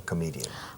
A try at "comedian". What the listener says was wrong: Sin T al final.